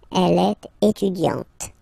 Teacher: you don't really insist on the E, but you insist quite much on the T